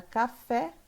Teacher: na palavra café é a sílaba tônica é a última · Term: oxítona